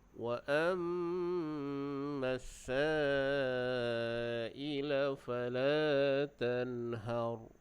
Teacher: Kita jelaskan bunyi nun, dan waqaf dengan ra dibaca dengan tebal. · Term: izhar